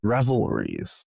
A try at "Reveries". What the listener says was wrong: No, Reveries, not Revelries. Yes, there's no L. adding L's to it?